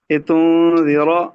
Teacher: یہاں پر را کو پر پڑھیں گے